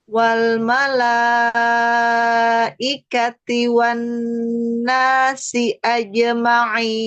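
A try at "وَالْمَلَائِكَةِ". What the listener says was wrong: Ya, lamnya lebarkan lagi, tahan sedikit lagi inhirobainiyahnya.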